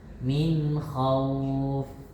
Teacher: Gigi atas tempel ke bibir bawah ketika baca fa.